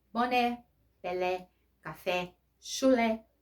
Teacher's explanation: Acento agudo, você pronuncia com som aberto.